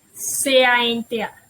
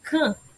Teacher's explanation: o A com o N, eles vão se juntar, formando um som nasal representado pelo símbolozinho aí em cima, tio.